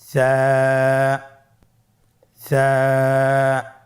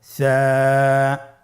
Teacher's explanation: জিহ্বার আগা সামনের উপরের 2 দাঁতের আগার সঙ্গে লাগিয়ে উচ্চারিত হয়